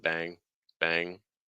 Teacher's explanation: followed by like a g sound it's like bang bang so you want to say bang with that back of your tongue · you want to say bang, with that back of your tongue, high NG sound, bang, bang.